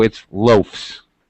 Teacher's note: the pronunciation now follows the pronunciation of an f f or a voiceless sound